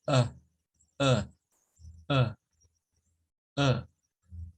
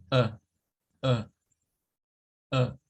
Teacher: La lengua no hace nada, la boca no hace nada más que estar un poco entreabierta y usted trata de gesticular eso desde su garganta, como un pujido. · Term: schwa